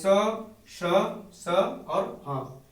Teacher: उच्चारण करते समय एक प्रकार का घर्षण होता है, एक रगड़ होता है, और उसके घर्षण या रगड़ से जो है वायु जो बाहर निकलती है वह गर्म हो जाती है, उसमें उष्मा हो जाती है, थोड़ा गर्म हो जाती है, इसलिए इसे हम क्या कहते हैं, ऊष्म व्यंजन भी कहते हैं।